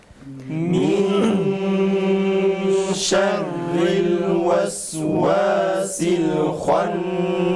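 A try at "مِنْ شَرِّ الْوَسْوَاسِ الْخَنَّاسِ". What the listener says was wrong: Ra harfine dikkat edelim. Hala kalın çıkıyor. Min şerril, şerril. Ra, ince ra harfinin nasıl çıkarıldığını, nasıl çıkarılması gerektiğini biz yine de doğru okuyalım ki izleyici kardeşlerimiz de tam bu şeyi fark etsinler.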